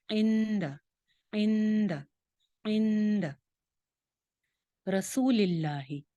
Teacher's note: اخفا کریں گے، نون کی آواز کو چھپا لیں گے